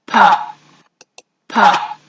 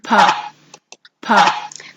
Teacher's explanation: the vocal fold isn't in action. The vocal fold doesn't vibrate. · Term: voiceless